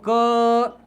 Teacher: अगर लंबे समय तक हम लोग क बोले तो अ की ध्वनि आ रही है और के ए की आवाज आ रही है, मतलब समझना कि क से शुरुआत की थी ए पर चले गए और क से शुरुआत की थी अ पर चले गए।